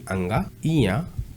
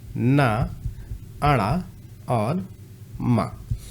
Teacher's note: ये पांचों के पांचों पंचमाक्षर क्या है ये इनका उच्चारण स्थान है नासिका